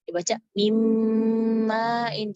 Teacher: dibaca mim ma'in, sinunnya nggak kesentuh, nggak disentuh makhrajnya